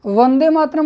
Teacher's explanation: वकार का उच्चारण स्थान क्या है? दंतोष्ठ है